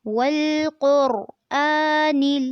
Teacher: اس میں اپنے قاف کو پر کرنا ہے، را کو بھی پر کرنا ہے